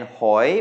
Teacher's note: hoi, which means shellfish, and that is a rising tone because of the high-class consonant